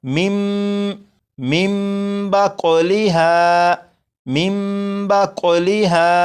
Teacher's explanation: नून साकिन के बाद बा है तो इस नून को मीम से बदलेंगे और गुन्ना करेंगे